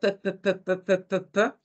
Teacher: Como un bilabial sordo, ¿sí? Un bilabial sordo. Y además, según el modo de articulación, como un oclusivo.